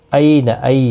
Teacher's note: یالین ہے، تھوڑا نرمی کے ساتھ آدھے الف کی مقدار کے برابر کھینچ کر پڑھیں گے